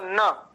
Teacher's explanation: नकार का उच्चारण स्थान है दंत और नासिका